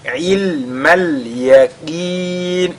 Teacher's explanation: Le qaf qui est lu avec, n'est-ce pas, tafkhim, bien qu'il soit affecté de la kasra.